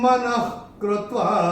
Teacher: क या ख आता है तो विसर्ग का उच्चारण होता है ख, फ्रॉम द एपिग्लॉटिस